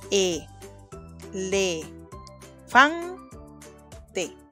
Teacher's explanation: Claro que sí, la sílaba tónica, es decir, la más fuerte será fan.